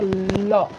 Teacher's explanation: तो हवा है वो दोनों जीवा के बगल से निकलती है। तो इसे हम क्या कहेंगे दोस्तों, इसे हम पार्श्विक स्वर कहते हैं। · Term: पार्श्विक व्यंजन